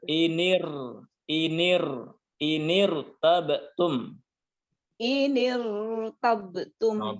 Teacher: ada hamzah wasol ketemu dengan huruf ro sukun. Maka ro sukunnya dibaca dengan suara tebal